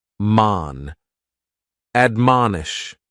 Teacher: admonish has three syllables and the stress is on that second syllable